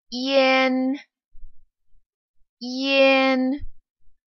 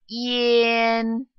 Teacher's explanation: What you can do is start with the E sound slowly and then get into an, yin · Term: front nasal final